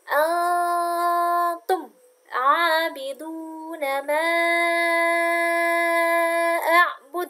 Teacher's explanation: nun sukun bertemu dengan ta. Berarti hukum bacaannya adalah ikhfa. Jadi didengungkan 3 harokat.